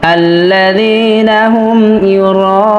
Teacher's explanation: যদি আমরা এখানে রিডিং তেলাওয়াতের সময় ওয়াকফ করি, তাহলে অবশ্যই নুনে জবরের উচ্চারণ করতে হবে না, নুনে সাকিন করতে হবে। যেমন আল্লাযীনা হুম ইউরাউন।